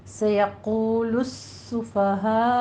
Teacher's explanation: سیقول السفہاء، لام شمسیہ ہے یہاں پہ تو آپ نے مدغم کر کے سین کو پڑھنا ہے، حروف شمسیہ میں سے ہے. سین کے اوپر سیٹی کی آواز بھی آنی چاہیے اور تشدید کو آپ نے سختی سے ادا کرنا ہے